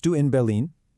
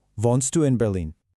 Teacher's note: Hear how my voice goes up on Berlin in Berlin. That little lift at the very end completely changes it from a statement into a question.